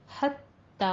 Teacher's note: تا کے اوپر شدہ ہے، تھوڑی سختی کر کے ادا کرنا ہے